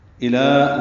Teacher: الى لام باریک ہے، 2 حرکات لمبا ہے